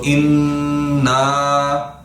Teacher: نون پہ تو غنہ کریں گے نا ان, اور پھر الف کے برابر لمبا بھی کریں گے. الف کی مقدار کتنی تھی, جیسے ہم ایک مٹھی نارمل سپیڈ سے کھولتے ہیں اتنی مقدار الف کی مقدار بیان کی جاتی ہے.